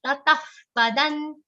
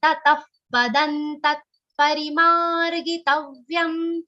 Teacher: The visarga after ta is pronounced like pa